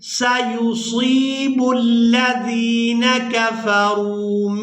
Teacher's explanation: سین کو باریک ادا کیا جائے گا اور صاد کو پورا ادا کریں گے۔